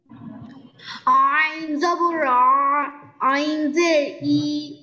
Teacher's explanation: দুই নাম্বার মাখরাজ কণ্ঠনালী বা হলকের মাঝখান হইতে উচ্চারিত হয়